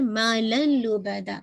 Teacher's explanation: मुराद तनवीन का लाम में इदगाम हो जाएगा, मालन के बजाय मालल पढ़ रहे। और ये भी आपका जिसे कहा जाए आपको तनवीन की साउंड नहीं आ रही तो कंप्लीट मर्जिंग है, इदगाम कामिल है लेकिन विदाउट गुन्ना।